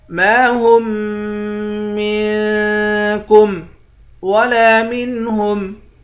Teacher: ہا کو تشدید والے میم کے ساتھ ملا کر یہاں ادغام مع الغنہ کریں گے